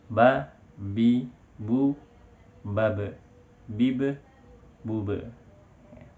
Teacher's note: Ketika melafalkan huruf ba, tidak banyak nafas yang keluar. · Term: jahar